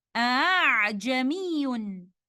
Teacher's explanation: The first Hamza we will show clearly, but the second Hamza will be read with Tashil or with ease, a sound between Hamza and alif. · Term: Tashilul Hamza